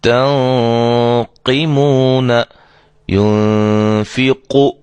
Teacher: نون ساکن کے بعد حروف مستعلیہ میں سے، یعنی موٹے حروف میں سے قاف آ گئی ہے، لہذا یہاں ہم اس غنے کو بھی موٹا کریں گے